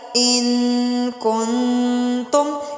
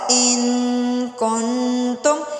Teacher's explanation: ولا تأخذکم بہما رأفۃ فی دین اللہ ان کنتم، یہاں پر غنہ ہو رہا ہے، ان کنتم، غنہ مینس کی آواز کو ناک میں لے جا کر اس کو لمبا کر کے پڑھا جائے